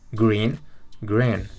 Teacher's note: Aquí la doble E suena como la I en español, pero en esta palabra, green, la I suena como un intermedio entre I y E